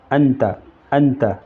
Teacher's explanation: ناک میں چھپا کر پڑھنا چاہیے۔ زبان کی نوک تلوے سے ہٹا کر جیسے اردو میں پنکھا کی نوک کو پڑھتے ہیں۔ اخفاء کی مقدار 1 الف ہے۔